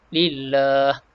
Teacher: Kalimah lillah, pada lam ni kita baca nipis. Sebab apa? Sebab baris yang terakhir yang kita jumpa kat sini, lam ni baris bawah.